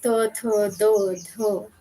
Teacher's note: त, थ, द, ध जैसे ये सारी ध्वनियाँ जो हैं कि बिना दाँतों के हम कह नहीं पाएँगे या फिर अगर कहने की कोशिश भी करेंगे, तो बिल्कुल वो तोतली ज़बान की तरह हमें सुनाई देगी और वो ठीक से समझ में नहीं आएगी। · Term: दंत ध्वनियाँ